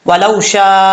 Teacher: اس کے بعد ہے وَلَوْ شَاءَ، واو کو پڑھتے وقت ہونٹ گول کریں گے، لام کے بعد جو واو ہے یہ واو مدہ نہیں ہے، واو لین ہے، اس کو لمبا کرنے کی ضرورت نہیں ہے، وَلَوْ شَاءَ اللَّهُ، شین کے آگے جو الف ہے اس کے اوپر مد متصل ہے، اس کو 5 الف کے برابر لمبا کریں گے